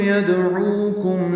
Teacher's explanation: یدعوکم دال ساکن پہ قلقلہ ہے ، عو واو مدہ ہے، عین وسط حلق سے ادا ہوگا